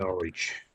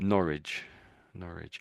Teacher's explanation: in place names, often the W in place names is silent